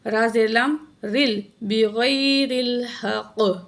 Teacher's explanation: را کے نیچے زیر ہے. درمیان میں الف کو نہیں پڑھا جائے گا. را کی زیر کو لام جزم کے ساتھ ملائیں گے